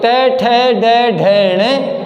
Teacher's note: इनका जो उच्चारण है वो मूर्धा से होता है, जीभ के बीचले भाग से इनका उच्चारण होता है, इसलिए इनको मूर्धन्य ध्वनि कहते हैं।